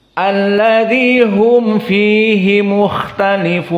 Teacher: maka di sini mimnya harus jelas, tidak gunnah dan tidak idgham, mim dimasukkan kepada fa, tapi jelas makhrajnya mim. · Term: idhar syafawi